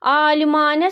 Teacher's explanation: Alimanə sözündə birinci və ikinci A-lar uzanır.